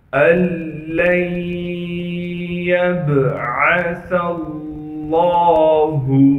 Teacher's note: لفظ اللہ کے لام سے پہلے سا پر زبر ہونے کی وجہ سے لفظ اللہ کے لام کو موٹا کر کے پڑھیں گے